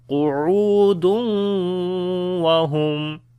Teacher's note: if we continue, so we make idgham with gunna, then it will be qu'udun wa hum